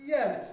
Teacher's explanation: i might start a bit before the top and lead up to the top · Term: high fall